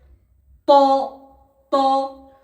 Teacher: ত উচ্চারণ হয় তায়ের মতো, এই জিভের আগাটা ওপরের দুই দাঁতের গোড়ার সাথে লাগবে, সামনের দুই দাঁতের গোড়ার সাথে।